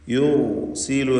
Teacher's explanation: യുർസിലു എന്ന് പറയുമ്പോൾ റാഇന് തഫ്ഖീമാണ്. സാക്കിനത്തായ റാ തൊട്ടുമുമ്പിൽ ദം, ഇവിടെ തഫ്ഖീം ചെയ്തുകൊണ്ട് റാഇനെ ഉച്ചരിക്കുക.